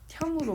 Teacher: 근데 형으로 발음이 난다는 거죠. 디귿하고 히읗이 합쳐지니까 티읕이 되더라. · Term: 거센 소리